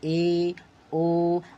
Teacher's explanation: जिन स्वरों के उच्चारण में मुख द्वार आधा बंद रहता है।